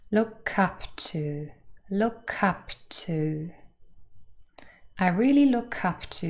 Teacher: first of all that's the stress and here is the linking the curve from look joins with the up and forms something that sounds like cup